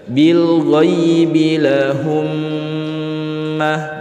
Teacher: Mim sukun setelahnya terdapat huruf mim harus dibaca dengung. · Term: idgham syafawi